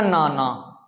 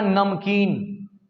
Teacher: एक न होता है जो हम नाक से बोलते हैं, ये दंत न जो नाक से उच्चारण होता है। दंत न का उच्चारण नाक से होता है और दांत से होता है।